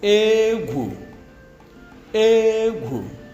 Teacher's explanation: The first one we have high, low. High, low.